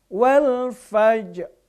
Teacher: Gerakan ro-nya sedikit saja, setengah harokat saja. Itu yang dimaksud dengan raum ya.